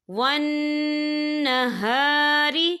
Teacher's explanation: ان فی خلق السماوات والارض واختلاف اللیل والنہار، یا دیکھیں ون، یہاں نون مشدد ہے تو یہاں پر غنہ ہوگا، اور ہاری یہاں پر الف مدہ ہو رہا ہے، خالی الف سے پہلے زبر ہے، تو ہم اسے 2 یا 3 حرکت کے برابر کھینچ کے پڑھیں گے